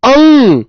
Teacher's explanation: चंद्र बिंदु नहीं है क्योंकि अंग, नाक बोलकर देखो, अंग, नाक और मुंह दोनों से आवाज आ रही है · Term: अनुनासिक वर्ण